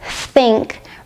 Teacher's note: The unvoiced th sound f like in the word think requires your tongue to poke out between your top and bottom teeth. Your tongue should be a little tense and you should blow out air without using your vocal cords.